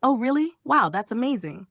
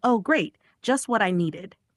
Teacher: The voice goes up then down. It shows strong feelings. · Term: rise fall intonation